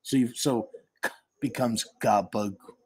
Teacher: Now try to pronounce Capicola. The C, which are really K, the K, Capicola, K, sounds become voiced, so they turn into a G because you're trying to make it flow.